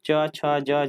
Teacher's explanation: तालु से। तो तालु से हम लोग च वर्ग का उच्चारण करते हैं। तो याद रखिए, तालु से में जैसा च, छ, ज, झ ये आता है, च, छ, ज, झ।